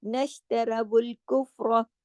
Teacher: अब सिर्फ रा मोटा है, बाकी सब बारीक।